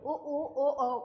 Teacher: उ ऊ ओ औ का जब बोलेंगे तो देखेंगे कि होठ हमारे गोलाकार हो गए। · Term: वृत्ताकार